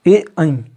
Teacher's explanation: तो ए ऐ पहले कंठ बोला फिर तालु बोला, तो ए ऐ क्या हो गया, कंठ तालव्य हो गया